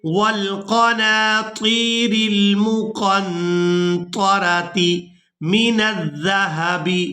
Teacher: کھینچ کر ادا کریں گے، والبنین والقناطیر، والقناطیر المقنطرۃ، یہاں پر قاف کو نون ساکن کے ساتھ ملائیں گے تو نون پر اخفا کریں گے، یعنی نون کی آواز کو ناک میں چھپا کر ادا کریں گے